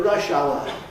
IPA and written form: ˋrʌʃ aʊə (rush hour)